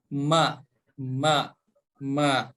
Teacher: Kemudian huruf mim, tempat keluarnya dengan menempelkan kedua bibir kita ya.